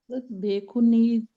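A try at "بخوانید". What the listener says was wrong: बेख्वानीद, वो के बाद अलिफ भी है ना,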